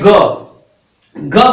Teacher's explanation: ग को आप लोग बोलेंगे तो ये क्या है, गले से निकल रहा है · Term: कंठ व्यंजन